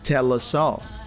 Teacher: Basically, the L sound from tell links to the following vowel sound in us, tell us. And then the S from us also links to the following vowel sound in all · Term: connected speech